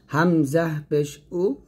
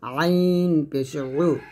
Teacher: হামজাহা আমরা গলার শুরু থেকে নিয়ে আসবো, আর আইন হা গলার মাঝখান থেকে চাপ দিয়ে নিয়ে আসবো।